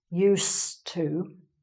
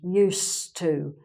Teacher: We also don't really pronounce the d much.